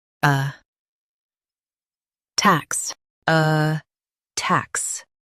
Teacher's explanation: Stress tacks and keep uh soft.